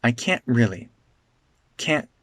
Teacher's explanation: this tea becomes a glottal stop before an R